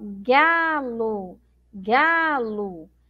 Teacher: eu pronuncio como se tivesse uma letra U, mas na verdade eu tenho a letra O